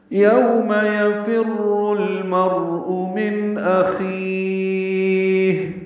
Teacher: یو واولین ہے، ہونٹ کو آگے کر لائیں گے، نا تمام گول کریں گے